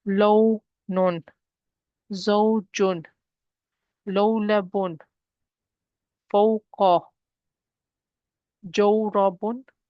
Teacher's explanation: They are not stretching sounds. They are short sounds, short vowel sounds, which we pronounce because of the fatha before it.